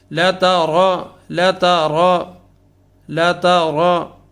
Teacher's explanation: تا باریک ہے اور را جو ہے وہ پر ہے